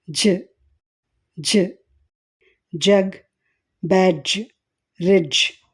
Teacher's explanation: జ వాయిస్డ్. ఎందుకంటే ఈ శబ్దాన్ని ఉచ్చరించేటప్పుడు గొంతులో వోకల్ కార్డ్స్ కంపించడం గమనించవచ్చు.